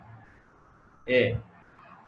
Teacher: কণ্ঠ থেকে বের হয়, তালুতে কিছুটা বাধাপ্রাপ্ত হয়, যেন কণ্ঠ ও তালু।